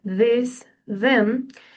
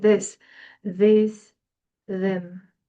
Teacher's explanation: The use of a D sound instead of a TH sound